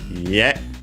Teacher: accented on the last syllable